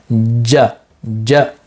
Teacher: middle of the tongue with the middle of the upper pallet ja ja in this case of course it's a g g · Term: jim